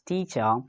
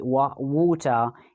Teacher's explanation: Okay, so they're not pronouncing the sound, and instead of the R sound, they are using the schwa sound. Okay, when before the R, we have got a vowel sound. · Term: non-rhotic